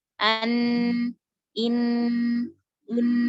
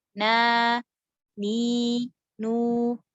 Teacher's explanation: ketika lidah menyentuh langit-langit, maka aliran suara pada nun mengalir melalui rongga hidung